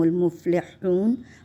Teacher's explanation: ہ کو حلق سے پڑھا جاتا ہے تاکہ پتہ چلے کہ حروف حلقی کے حرف حلق سے ادا ہو رہے ہیں